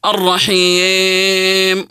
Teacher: من ضمن التغييرات الصوتيه نطق الياء كالالف المماله